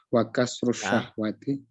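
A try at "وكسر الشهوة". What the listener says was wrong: jangan kasru, jangan kasru, kan ada wa. Tadi kan dibacanya apa? Ila qahri, berarti wa apa? Nah, maktuf wa kasrish. Wa kasrish syahwati.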